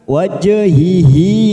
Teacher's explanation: huruf Jim sukun namanya bacaan Qalqalah sugroh karena mati tengah kalimat kita pantulkan